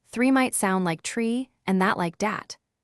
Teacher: The T and D sounds are often softer, almost touching the back of the teeth. A big giveaway is the th sound. It often becomes a t or d. For example, three might sound like tree and that like dat.